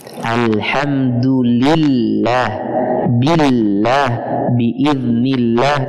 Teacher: Lafzul jalalah apabila huruf sebelumnya berharakat kasrah, maka dibaca tarqiq.